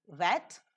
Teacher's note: For the articulation of V, as in W-E-T, wet, the soft palate is raised to shut off the nasal passage of air. The back part of the tongue is raised in the direction of the soft palate and assumes a position for a vowel between close and half close, and the lips are rounded. The glide quickly glides off to the position of the following vowel. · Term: labiovelar